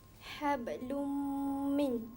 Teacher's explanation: Baris dua tak dengar. Dia hablum, bukan hablun. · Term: idgham